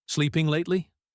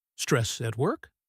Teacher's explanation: This is when you repeat the last few words the other person said, but with a rising intonation. It is a fantastic way to show you are listening without having to come up with a new sentence. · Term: the echo